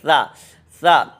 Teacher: زبان کا کنارہ اوپر والے دانتوں کے کنارے سے لگے گا۔